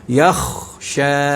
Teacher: kha, tebal ya. Yakhsha, kha tu masuk dalam huruf isti'la.